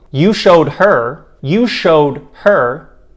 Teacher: do you hear how the h is very clearly pronounced because her is emphasized in the sentence you showed her you're emphasizing the word her as a result